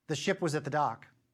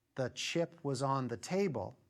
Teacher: the ship was at the dock we'll have a very small sh duration the chip was on the table we'll have a very long duration